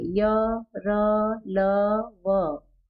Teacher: जीभ क्या कर रही है, पूरी तरह से किसी भाग को स्पर्श नहीं कर रही है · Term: अंतस्थ व्यंजन